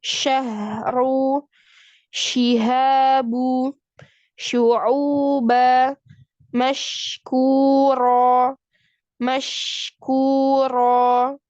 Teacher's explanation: udaranya menyebar pada mulut yang keluar secara bersamaan ketika mengucapkan huruf shin. · Hurufnya ada 1, hanya ada shin. Ya, pengucapan huruf disertai dengan menyebarnya suara di dalam mulut. Suara terdorong dengan kuat. · Ya, tersebarnya suara shin dari makrotnya sehingga menabrak dinding dalam gigi atas dan bawah. Jadi anginnya itu menyebar sampai menabrak gigi atas dan gigi bawah. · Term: sifat tafashi